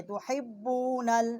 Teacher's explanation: ہم نے باب کے ساتھ با کے ساتھ مشدد کیا ہے۔ ہا جو ہے یہ حروف حلقی ہے، وصل حلق سے اس کا مخرج ہے، با جو ہے یہ ہونٹوں کے تری سے نکلتی ہے